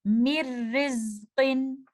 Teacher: آپ نے دیکھا یہاں پر میں نے اس طرح سے نہیں پڑھا مِر رزقن، کیونکہ یہ تو میں نے غنہ کی آواز ساتھ دے دی، تو یہاں پر جو ادغام ہو رہا ہے یہ بغیر غنہ ہوگا، اس میں غنہ کی کوئی آواز نہیں ہوگی، بلکہ میم کو آپ ڈائریکٹلی را کے ساتھ ملا دیں گے اور آپ کو کوئی بھی نیزل ساؤنڈ نہیں آئے گی · اب ہم دیکھتے ہیں کہ اگر نون ساکنہ اور تنوین کے بعد آنے والا لیٹر لیٹر را یا لیٹر لام میں سے کوئی ایک لیٹر ہے، تو ایسی صورت میں جو ادغام ہوگا اس میں آپ کو غنہ یا نیزل ساؤنڈ کی کوئی بھی آواز نہیں آئے گی